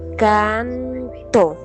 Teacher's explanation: Ejemplo, la palabra canto se escribe fonéticamente canto. Se indica que la n es un poco dental tocando los dientes.